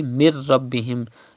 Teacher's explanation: Idgham will be done, but gunna will not be done, because in case of ra and lam, idgham is done without gunna. So it will be mir rabbihim.